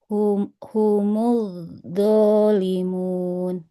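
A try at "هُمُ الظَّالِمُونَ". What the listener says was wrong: Nah, yang di awalnya dia seperti ada perpindahan makhraj ya. humuz, tapi ketika diucapkan jadi do. Humuz dolimun. Jangan jadi humuz dolimun ya. Humuz dolimun. humuz do. Di awalnya seperti mau bilang do, tapi diucapkan jadi ucapkan jadi do, dia hati-hati ya.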